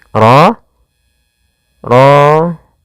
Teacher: Rnya harus dibaca dengan tebal. Ro ro tafkhim. Ro tebal.